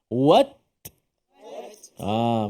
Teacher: Sebab ta dia bukan suara. Yang bunyinya adalah hamas ataupun udara, nafas yang terlepas daripada makhraj. Kalau suara mesti wats, tidak. · Tahankan suara pada makhraj. Lepas daripada lidah itu baru ada angin.